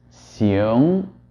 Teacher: So the first xing pronunciation that you're hearing is generated by retaining the sound in the front of the mouth as long as possible and only moving to the back at the ng part of the sound, while as the second xiong is allowing the sound to travel back into the mouth much earlier